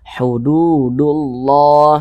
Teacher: sebelumnya tanda baca damah makanya lafaz Allah kita baca tebal